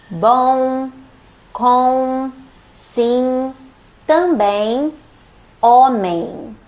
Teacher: You don't really pronounce the M. You just nasalize the vowel.